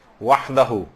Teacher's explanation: وحدہ ہا کی آواز آپ کو صحیح طور پر نکالنی، اور ہلکے سے نہیں نکالنی جیسے دو چشمی ہیں نکالتی ہیں، گول ہے نکالتی ہیں، وحدہ نہیں، وحدہ۔